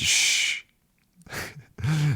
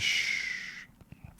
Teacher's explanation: So, this sound we produce, we sort of lift the tongue up, shh, almost touching the top of the mouth, and all the air rushes around the tongue and makes that beautiful friction sound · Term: shh sound